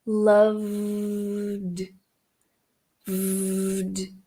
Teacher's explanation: transição direta pro som do d então vai ficar Love VD Cuidado para não fazer uma vogal entre o v e o d passa direto do V pro d